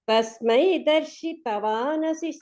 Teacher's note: తస్మై దర్శితవా డా దగ్గర స్ట్రెస్ ఉంటే బాగుంటుంది.